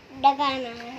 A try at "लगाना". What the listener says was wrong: डगाना क्या होता है? लगाना पड़ेगा, लगाना पड़ेगा। नहीं, डगाना नहीं बोलते बेटा, लगाना बोलते हैं।